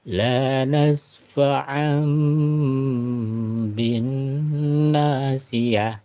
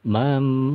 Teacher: tanwinnya atau nun matinya berubah menjadi huruf mim. Nah, cara bacanya berubah jadi huruf mim. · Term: iklab